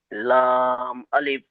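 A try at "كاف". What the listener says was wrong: লাম নয়, কাফ। কাফ। এখানে এখানে খেয়াল করেন, এখানে খেয়াল করেন। এই যে কাফ, এই যে কাফ, এই কাপটা একটু ভালো করে দেখে নেন। এই কাপটা দেখেছেন তো? এই কাপটা কিরকম লাগছে? যদি আমি এই আলিফটা কেটে বাদ দিয়ে দিই তাহলে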